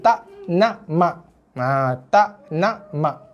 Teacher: macam K je, hampir bunyi macam bunyi huruf K. Cuma K dia bunyi K dalam tekak lah. Kena pastikan memang bunyi dia macam bunyi huruf K, macam kita sebut tak nak mak. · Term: hamzah